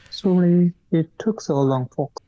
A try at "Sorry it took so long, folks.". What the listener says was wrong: Don't pause after Sorry. Uh you have to because it's connected. It's we we should not pause after sorry.